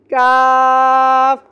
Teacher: काफ का मखरज है जबान की जड़ और तालु के सख्त हिस्से से। ये भी इसी तरह है, जबान की जड़ जो है वो ऐसे टकराएगी तालु के सख्त हिस्से पे।